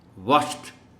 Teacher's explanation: واچڈ آخر میں ٹی کی، ہلکی ٹی کی آواز آتی